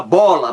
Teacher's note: O B também é uma consoante bilabial, porque ao pronunciar essa consoante, você encosta um lábio no outro.